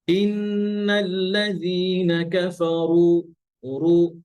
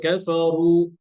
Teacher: যখন পেশ হয়, দম্মা হয়, তখন এটাকে একটু এক্সট্রা একটু প্রেসার দিতে হয়, এতে করে এটা পরিপূর্ণভাবে মোটা হয়।